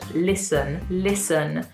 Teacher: as you can hear, there's no T sound when I say this word